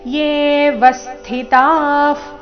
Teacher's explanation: ವಿಸರ್ಗದ ಉಚ್ಚಾರಣೆ ಫ ರೀತಿ